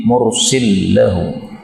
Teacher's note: lam ketemu lam boleh idgham menjadi mursillahu